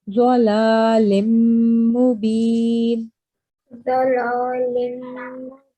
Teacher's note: كنا And Over here again, remember, new rule that you've just learned about. So this is tanween, and after that there is mim mushaddad. So we're going to make a nasal sound and prolong it for 2 seconds.